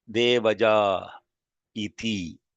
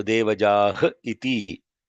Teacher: Whenever there is a vowel followed by visarga, the visarga is dropped and there is a pause introduced, short or long pause.